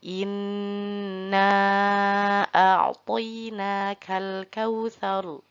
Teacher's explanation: Pada huruf nun tersebut juga sama, berharokat tasydid atau ada tasydidnya, maka sama harus ditahan selama 3 harokat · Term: nun bertasydid